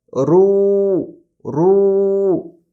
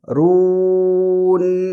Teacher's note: را موٹا پڑھیں گے اور او کی آواز بھی دیں گے